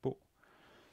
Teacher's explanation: You heard the glottal stop at the end